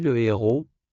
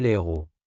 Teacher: H aspiré. Avec un H aspiré, c'est différent. Pas d'élision, on dit le héros, pas l'héros.